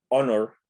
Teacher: la palabra se pronuncia honor, la H es muda. Entonces, mi primer sonido es vocálico.